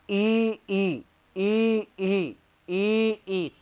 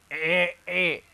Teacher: तालु से। तो ये ई और ई का उच्चारण स्थान हो जाएगा दोस्तों तालु